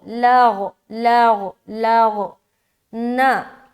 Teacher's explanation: کیونکہ غین بھی حروف مستعلیہ میں سے ایک ہے، موٹا ادا کریں گے چاہے اس کے اوپر کوئی بھی حرکت ہو